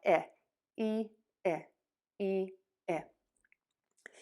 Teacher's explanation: Your tongue will go from way high for the e, pop down a little bit, still going to be flat and high for that ih. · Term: short i